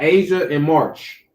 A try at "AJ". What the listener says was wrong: You said Asia and March. It's not an additional A.